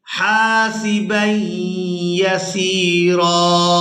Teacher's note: وقف کی صورت میں را پر ایک زبر ادا کریں گے